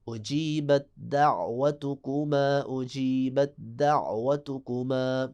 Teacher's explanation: بت جب کہہ دیا تو غلط ہو جائے گا، فوراً دال کے ساتھ آپ نے اس کو ملا دینا ہے اور ادغام کرنا ہے. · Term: ادغام متجانسین